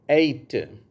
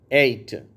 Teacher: அடுத்தது அடுத்து உள்ள வார்த்தை 8 சரியா நம்மில் அநேகர் இதை தப்பாதான் உச்சரிக்கிறாங்க 8ன்னு யா ல தான் ஆரம்பிக்கிறாங்க யால ஆரம்பிக்கக்கூடாது ஏல ஆரம்பிக்கணும்